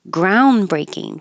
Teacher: the n and the D are made in the same position so you don't need to release the D